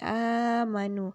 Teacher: Kalimat a-nya itu dibaca dengan panjang 2 harokat. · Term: mad badal